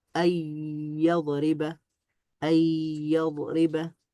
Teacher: ন সাউন্ডটা বাদ পড়বে, শুধুমাত্র ইয়া সাউন্ডটা থাকবে, আর এখানে একটা তাসদিদ যোগ হবে। মানে যুক্ত হলো আর কি, যেহেতু এই দুইটা মার্জ হয়েছে, আর তাসদিদ এটা মার্জকে বোঝায়। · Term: ইদগাম